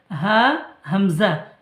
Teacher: কণ্ঠনালীর শুরু হইতে উচ্চারিত হয়